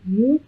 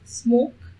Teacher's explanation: consonant but it is a nasal consonant we could see that the lips are not moving but they are close together so the air cannot pass through the oral cavity and the soft palate is also lowered it opens up the passage of nasal cavity and you can